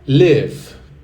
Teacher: Percebe que tem uma pequena extensão do i ali